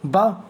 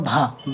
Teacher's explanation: ब क्या हो गया हमारा अल्पप्राण हो गया भ क्या हो गया हमारा महाप्राण हो गया